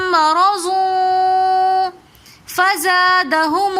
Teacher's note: آگے ضاد کے اوپر دو پیش کی مرضون میں ضاد کے اوپر دو پیش کی تنوین آ رہی ہے اور اس کے بعد دو پیش کی تنوین کے بعد اخفا کے 15 حروفوں میں سے فا آ رہا ہے تو اس لیے ہم یہاں پر غنہ کر کے پڑھیں گے